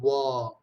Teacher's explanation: a glided voiced bilabial is war